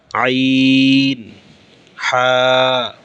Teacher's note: তাহলে 1 নম্বর মাখরাজ কণ্ঠনালীর শুরু থেকে হামজাহ, হা উচ্চারণ হয়। 2 নম্বর মাখরাজ, কণ্ঠনালীর মধ্যখান থেকে 2টি হরফ উচ্চারিত হয়। হরফগুলো হচ্ছে আইন আর একটা হা।